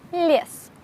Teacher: if Ye stands after a consonant, then it will be just pronounced as soft Ye, but without the Y sound.